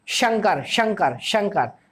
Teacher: हमारी जीभ एकदम से पीछे की तरफ थोड़ी सी अंदर घूमती है, और हमारी जो ध्वनि है वो बीच में, जो हमारा मुख विवर में जो खाली सा हिस्सा है बीच में, तालू के जस्ट ऊपर, जीवा के जस्ट ऊपर, वहां से घर्षण करती है। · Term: शक्कर वाला स